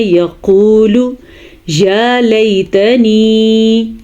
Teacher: یا مدہ اس کو تھوڑا لمبا کریں گے, کھینچ کے پڑھیں گے